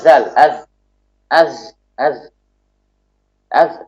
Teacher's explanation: Contohnya zal, zal ini suaranya mengalir, zal. Suaranya mengalir, namun nafasnya dia tertahan. Nafasnya tidak mengalir.